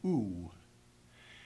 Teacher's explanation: the oo sound at the end can have the hint of a w sound to to it when you say ooh you remember that when